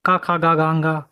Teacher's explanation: क, ख, ग, ग, ङ कंठ कहलाता है।